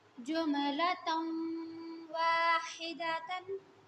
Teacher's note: अब यहाँ पे हमारे पास तनवीन के बाद वाव है तो गुन्ना तो हम करेंगे, लेकिन वाव के ऊपर हमारे पास खड़ी ज़बर है तो यहाँ हम इसको भी एक अलिफ के बराबर लंबा करेंगे